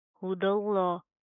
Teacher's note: दाल लाम ज़बर दल, लाम खड़ा ज़बर ला, दल्ला, हुदल्ला। दाल बारीक, लफ्ज़ अल्लाह का लाम मोटा